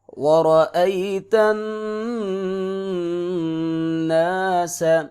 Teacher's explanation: نون پہ شد ہے، یہاں پہ ادغام غنہ ہوگا، ناک سے آواز آئے گی، سین کی سیٹی ہے۔